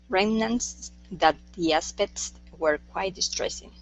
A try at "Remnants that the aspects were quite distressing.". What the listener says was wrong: Give me a K sound in there as well. Aspects.